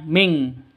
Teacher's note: Cara bacanya samar, didengungkan, siap-siap ke huruf kafnya. Nun matinya ditambah dengan ng. Makanya bacanya ming.